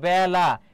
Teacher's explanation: আর এর উচ্চারণ যখন এর মত না হয়ে এ এর মত হয় তখন সেটা বিবৃত হবে কি হবে বলতো বিবৃত যেমন এখানে একটা এর উচ্চারণটা কি হচ্ছে বলতো এ হয়ে যাচ্ছে ঠিক তেমনিভাবে বেলা এখানে ব এর উচ্চারণটা ব্যা হয়ে যাচ্ছে